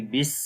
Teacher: نیچے زیر ہے جس کو سین کے ساتھ ملائیں گے، بس، سین کی آواز کے اندر سیٹی کی آواز آئے گی